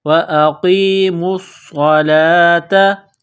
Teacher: صاد مشدد ہے تو صاد کو دبانا ہے، سختی کرنی ہے، صاد میں سیٹی کی آواز پیدا کرنی ہے